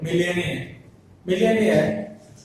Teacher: the stress falls on the AIR